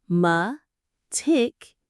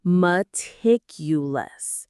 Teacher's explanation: The stress is on tick.